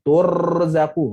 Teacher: ra mesti bergetar. Tetapi dia tidak boleh bergetar lama. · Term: tikrar